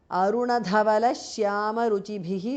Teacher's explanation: Dhavala Dha and Ruchibhihi, the Bha, both are Mahapranaha.